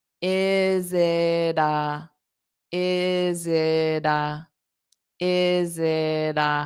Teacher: instead of that t that strong t in it zit I would pronounce it more like a d isid is it is it the is it so if I